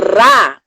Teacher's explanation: Ao invés de fazer o RA com a ponta da língua tocando o céu da boca e vibrando, eles fazem na garganta.